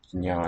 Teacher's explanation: No vowel comes between the j and the n. Jnya in Sanskrit.